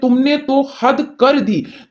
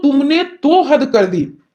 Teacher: तुमने तो हद कर दी यानी तो पे आपने जोर दिया